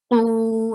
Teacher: qu is long, and qaf is heavy